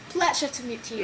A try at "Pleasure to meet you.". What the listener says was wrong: So just make the vowels a bit longer.